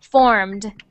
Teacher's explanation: form so when we add the ed on to that word we don't say ed we say just a little sound at the end like the d